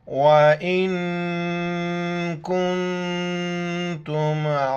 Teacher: نون ساکن ہے، ناک میں آواز پیدا کرنی ہے، دونوں جگہوں پر نون ساکن ہے، یعنی اس پر کوئی زبر زیر پیش نہیں ہے، ناک میں آواز پیدا کریں گے اور حمزہ کو نون کے ساتھ ملائیں گے۔